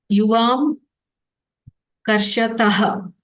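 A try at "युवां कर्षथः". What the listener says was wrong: you have to say tha, tha. if you by mistake say tah, then it goes to the prathama purusha. You have to say very clearly tha.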